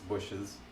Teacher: when you have the s that can't follow an S you have to add a little schwa